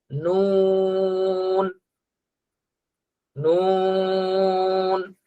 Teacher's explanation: নুন, নুন, জিহ্বার আগা তার বরাবর উপরের তালুর সঙ্গে লাগবে। নুন, নুন। মিম, মিম।